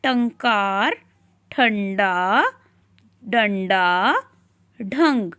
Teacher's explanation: टंकार, ठंडा, डंडा, ढंग, इन सभी में हमें आधे न की ध्वनि सुनाई दे रही है